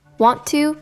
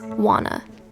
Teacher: Native speakers link words together all the time. Want to becomes wanna. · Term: connected speech